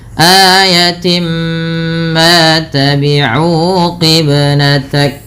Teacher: Suara tinnya masuk kepada huruf mim. Maka dihukumi dengan bacaan idgham bigunah dengan menahan bunyi suara mnya sepanjang dua harakat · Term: idgham bi gunnah